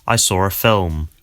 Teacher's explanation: you can hear that there's an R sound connecting saw and a. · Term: intrusive R